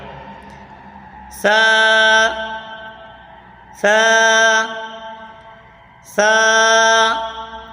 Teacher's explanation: के दांतों की जड़ से अदा होता है सा सा सा जबान का सिरा और ऊपर के दांतों के अंदरूनी किनारे से अदा होता है · زبان کا سرا اور اوپر کے دانتوں کے اندرونی کنارے سے ادا ہوتا ہے